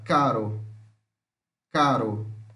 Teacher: esse aqui é o tep tep alveolar sonora